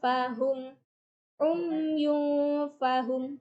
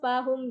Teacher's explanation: maka cara bacanya samar. Jadi panjangnya 2 sampai 3 harokat. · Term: ikhfa